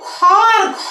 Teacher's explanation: খ আর ঘ যখন উচ্চারণ করবা তখন কিন্তু বাতাসের আধিক্য বেশি থাকবে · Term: মহাপ্রাণ